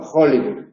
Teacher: En casos de préstamos del inglés, como no existe ese fonema en el castellano, se sustituye por el fonema más próximo, que es la J